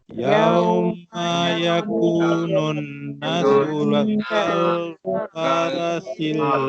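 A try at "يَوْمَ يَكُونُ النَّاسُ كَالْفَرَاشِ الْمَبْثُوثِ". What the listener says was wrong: Perkataan yakunun na tu panjang. Ada alif kan? Yakunun yakunun nasu kal.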